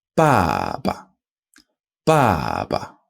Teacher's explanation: So we've got the fourth tone, ba, with the fifth tone at the end.